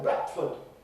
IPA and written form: ˈbrætfəd (Bradford)